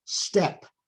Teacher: that t is not aspirated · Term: unaspirated